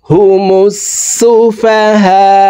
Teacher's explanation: হুমুস সিনের উপরে তাসদিদ আছে তাসদিদ ওয়ালা হরফ দুইবার উচ্চারণ করে পড়ব